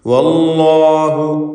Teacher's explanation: അതിൽ ലാമിന് വല്ലാഹു എന്ന് ലാമിനെ തടിപ്പിച്ച് ഉച്ചരിക്കുക. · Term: തഫ്ഖീം